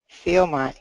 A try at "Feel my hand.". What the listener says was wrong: Good. Keep that L a little stronger. Do you know the light L and the dark L? Do you know the difference? I prefer a light L. It's cleaner. Feel light, my hand.